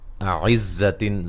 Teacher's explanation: زا کو سیٹی سے ادا کریں گے